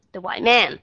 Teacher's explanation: Cho nên khi mà các bạn đọc cái nguyên cái cụm đó, cái chữ man mới là cái chữ nhấn của các bạn